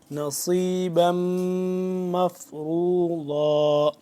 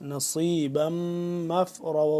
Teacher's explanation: صاد کو موٹا کر کے پڑھیں گے، سین سے جدا کر کے